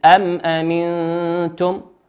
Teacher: ويسمى كذلك إظهارا شفويا لخروج الميم الساكنة المظهرة من الشفتين · الميم في قوله أم هي ميم ساكنة أتى بعدها حرف الهمزة، نقرأها كما هي واضحة. قلنا الإظهار هو الوضوح والبيان.